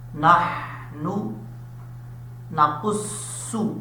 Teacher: نحن نقص، قاف حروف مصطلح میں سے ہے، پر پڑھا جائے گا، اور اس کا مخرج ہے زبان کی جڑ اوپر والے تالو کے نرم حصے سے لگے تو قاف پڑھا جاتا ہے. صاد جو ہے یہ حروف مصطلح میں سے ہے، پر پڑھا جائے گا، حروف صفیرہ میں سے بھی ہے، سیٹی کے ساتھ بھی پڑھا جائے گا